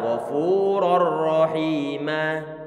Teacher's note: Kemudian yang ma, kalau kita perhatikan bahwa mimnya dia berfathatain, asalnya rohiman. Di saat kita itu waqaf ataupun berhenti pada lafaz rohiman tersebut, maka tanwinnya perlu dihilangkan dan disisakan nanti fathahnya saja. Dan kita anggap bahwa di situ ada alifnya nanti, sehingga dibaca ghafurur rahimah.